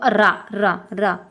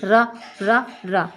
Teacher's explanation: तो रा का उच्चारण स्थान हमारा क्या होगा, ये हमारा होगा मूर्धन्य होगा, कैसा होता है, मूर्धन्य होता है।